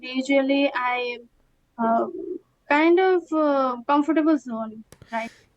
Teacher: Also, I noticed with usually, she pronounces it as usually, so she has a z instead of a j.